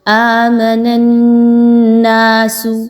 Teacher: آمن الناس، نون کو نون سے ملائیں گے، نون مشدد ہے، نون زبر الف نا، 2 الف کے برابر اس کو لمبا کر کے پڑھیں گے، نون مشدد پر غنہ کرتے ہوئے